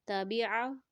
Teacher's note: عین کا ساؤنڈ گلے کے درمیانی حصے سے آئے گا